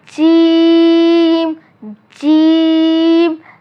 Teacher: آپ نے جیم کو 3 الف کے برابر کھینچ کر پڑھنا ہے۔ ابھی تک ہم نے جتنے بھی حروف پڑھے ان سب کو ہم نے 1 الف کے برابر کھینچ کر پڑھا، لیکن جیم کو ہم نے 3 الف کے برابر کھینچنا ہے کیونکہ اس میں الف نہیں ہے۔